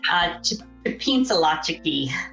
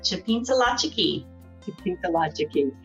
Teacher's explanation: those are nasalized L's or nasalized N's